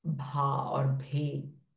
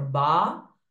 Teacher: So bh will become mahaprana sound. Ba is a alpa prana sound.